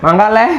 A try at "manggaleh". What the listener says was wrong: Tapi sebenarnya ucapannya lebih kayak manggaleh. Heh-nya tuh enggak hah gitu. Galer bukan galer, manggaleh.